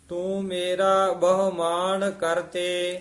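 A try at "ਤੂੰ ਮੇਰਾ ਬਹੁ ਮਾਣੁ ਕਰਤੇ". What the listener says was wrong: ਨਾਣੇ ਨਾਲ ਬੋਲਣਾ ਹੈ, ਮਾਨ ਨਹੀਂ ਕਹਿਣਾ।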